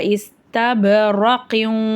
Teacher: சுக்குன் பெற்ற பா கல்கலா உடைய எழுத்து அசைச்சு உச்சரிச்சு ஓதணும்